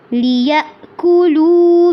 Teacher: لِيَأْكُلُوا میں حمزہ کو واضح کرنا ہے، لو کو لمبا کرنا ہے